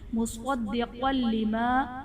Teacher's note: صاد اور قاف حرف مستعلیہ ہیں، انہیں پر کر کے پڑھیں گے۔ دال حرف قلقلہ مشدد ہے تو یہاں پر قلقلہ خوب جماؤں کے ساتھ ادا کریں گے۔